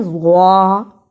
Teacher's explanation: زا اور زوا دونوں کی آواز میں فرق ہے، زوا کو موٹا پڑھنا ہے